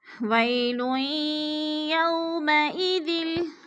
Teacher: لام دو پیش یا لوئیں، لام کو یا مشدد کے ساتھ ملانا ہے، ادھر ادغام کرنا ہے، سختی سے یعنی جما کر پڑھنا ہے. وَيْلٌ یو پہ وولین ہے، واو ساکن سے پہلے یا کے اوپر زبر ہے تو وولین کو ہم نے لمبا بھی نہیں کرنا اور جھٹکا بھی نہیں دینا.